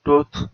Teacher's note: back close rounded vowel